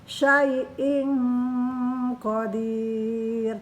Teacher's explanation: tanwin bertemu qaf, dibaca ikhfa.